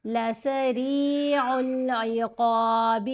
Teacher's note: را کے نیچے زیر ہے، ہم نے را کو باریک پڑھنا ہے اور زیر کے ساتھ یا ساکن ہے، یا مدہ ہے، را کو 2 حرکات کی مقدار ہم لمبا کریں گے.